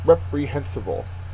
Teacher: Third syllable is accented.